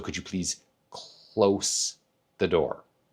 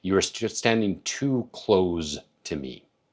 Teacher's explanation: The only difference between those two words is that Z sound versus an S sound.